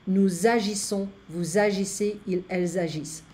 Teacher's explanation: Notice that the subject pronoun in the plural form with a verb starting with an H or a vowel will have an liaison, the Z sound.